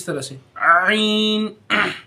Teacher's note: कुछ उसका निकल जाता है, लेकिन बहुत सारों नहीं निकलता, उनको आपको प्रैक्टिस करना पड़ेंगी, आपको महसूस करना पड़ेगा कि आइन कैसे निकले, आइन कैसे निकले। हलक से निकलता है, दूसरे हलक से